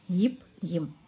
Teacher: இரண்டு உதடுகள் பொருந்துவதால் பிறக்கும் எழுத்து